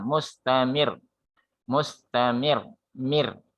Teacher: ketika rok mati dalam keadaan tasdid, dia punya sifat takrir yang berlebih. Mustamir, ada sedikit dipantulkan roknya, dia digetarkan.